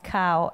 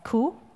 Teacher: Scottish variety, which is known stereotypically, there are even postcards about it, that they pronounce cow as coo. And maybe you've seen this hairy brown car, which is typical of Scotland, and it's written COO, so like a coo, not a cow.